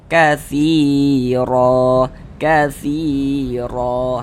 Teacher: dibaca tebal, sehingga pangkal lisan kita naik terangkat ke atas ketika kita mengucapkannya. Tebalkan huruf ro-nya. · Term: dibaca tabkhim